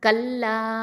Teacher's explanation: அப்போது இங்கே என்ன சட்டம் அப்படின்னா மத்தல் ஜாயிஸ் அல் முன்ஃபசில் அப்படிங்கிற சட்டம். அப்போ 4 இல்லைன்னா 5 ஹரக்கத்தை நீட்டணும், கல்லா அப்படின்னு நீட்டணும்.